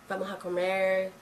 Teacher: tienen las R retroflejas